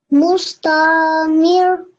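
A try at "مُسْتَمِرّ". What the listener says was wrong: Okay, you're reading it correct, but remember the ra is a mushaddad letter over here, so we do need to give some emphasis on the letter. We do need to pronounce the mushaddad over here. So mustamir.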